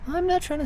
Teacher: we're going to be very breathy and airy with everything he says. He also looks really nervous, so we're going to have that inclination that he's close to crying at any given moment because being out in public is scary and it's not his comfortable place.